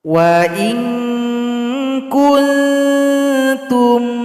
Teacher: Di sini juga nun sukun jumpa dengan ta, baca dengung dan samar-samar.